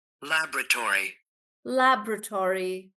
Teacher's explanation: So for me, the stress sounds like it's on Tory, like that.